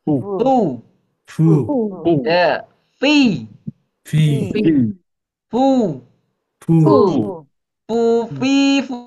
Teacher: ada hames, ada angin ya. Ada angin keluar. Fu ya. Fi fi fu buu fui.